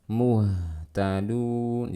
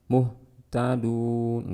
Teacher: di sini ha karena dia bersifat rokhawah, kita alirkan suaranya